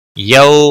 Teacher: یو واولین ہے تھوڑا نرمی کے ساتھ کھینچ کر ادا کریں گے